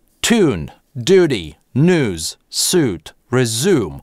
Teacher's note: Для американского произношения мы однозначно выкидываем [j] в позициях после [t] [d] [n] [s] [z].